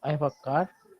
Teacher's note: remember in British IPA, the car R should be silent.